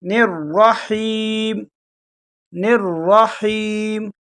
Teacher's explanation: را کو موٹا کر کے پڑھیں گے اور ہا کو گلے کے شروع سے ادا کریں گے